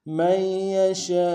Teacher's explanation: شین کے ساتھ الف مدہ کے اوپر مدہ اصلی ہے، کم سے کم 3 الف دار میں کھینچیں گے